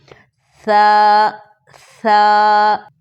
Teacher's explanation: ثا زبان کی نوک کو ثنایا علیاء کی نوک کے ساتھ ٹچ کرتے ہوئے نرمی کے ساتھ ادا ہوگا بغیر سیٹی کے